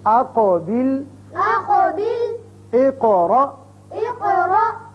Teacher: دونوں قاف جگہ پر قلقلے ہیں، دونوں جگہ ہم نے قاف کی 2 آوازیں نکالی